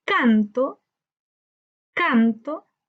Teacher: la sílaba tónica la encontramos en can, canto. Por tanto, esa es una palabra grave.